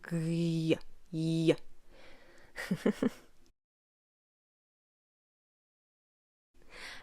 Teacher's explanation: palatal, meaning it is articulated in the middle or back part of the tongue, raised to your hard palate